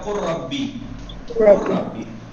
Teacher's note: लाम साकिन है, उसके बाद रे है तो रे में इदगाम हो जाएगा, लाम नहीं पढ़ा जाएगा